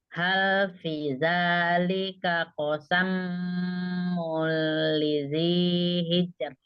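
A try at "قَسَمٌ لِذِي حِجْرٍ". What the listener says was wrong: Oke, fi yang di sini hal fi panjang. Ini ini bukan kosamu, ini mun. Mul, ya.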